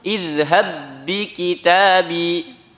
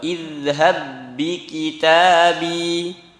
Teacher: Dimasukkan ba yang pertama ke ba yang kedua. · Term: Diidghamkan